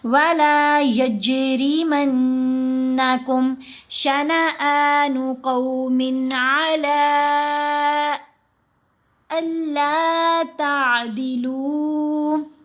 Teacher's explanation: لام کے اوپر مد منفصل 5 حرکات کی مقدار ہم نے لمبا کیا